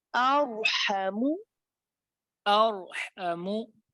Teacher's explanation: जबान अपने मखरज पे लगी रहे रा में, और आगे से हा भी अदा हो जाए।